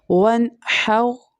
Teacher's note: یہاں پر ہا جو ہے middle part of the throat سے پروناؤنس ہوتی ہے